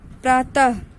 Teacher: तो इनको 2 बिंदु के रूप में अक्षरों के आगे, शब्दों के बीच और अंत में लगाए तो इनका उच्चारण आधे हा की भांति होता है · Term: विसर्ग